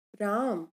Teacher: राम, राम न बोलकर हम राम, राम बोलते हैं, यानी इसका जो अंतिम स्वर है अ, उसका उच्चारण शीघ्रता के कारण नहीं करते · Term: अंत्य स्वर लोप